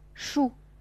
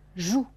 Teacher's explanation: 主要是清音，声带不振动，浊辅音声带要振动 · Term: 清浊辅音